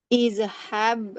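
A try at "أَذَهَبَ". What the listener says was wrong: Nah, di sini bukan i tapi a. azahaba. Azahaba.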